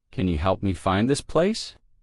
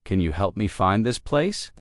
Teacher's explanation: Stressed words are help, find, and place.